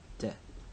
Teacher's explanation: So, Devar Adonai, here you see in the first syllable, the comments of davar reduces as far as it can, which is all the way to vocal shva. So it becomes just a muttered vowel